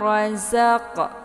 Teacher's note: Jika Anda membacanya sebagai 'rajak', maka lebih condong ke huruf 'jim'. Sedangkan 'jim' terletak di tengah lidah, dekat dengan 'sya'. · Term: zai